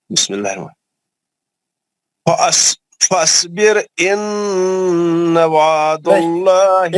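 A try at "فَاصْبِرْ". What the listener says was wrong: एक मिनट, अलिफ नहीं पढ़ना है ना, फसबिर, फासबिर नहीं, फसबिर।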